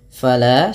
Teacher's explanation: la fathah bertemu Alif dua harakat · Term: Mad thi'i